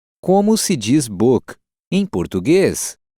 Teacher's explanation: Note the rising intonation of the sentence to mark that it's a question.